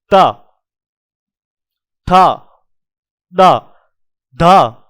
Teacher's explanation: त, ये देखो अपनी जो जीभ है ना, जीभ ये अपने दांतों को स्पर्श करते हुए निकलेगी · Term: त वर्ग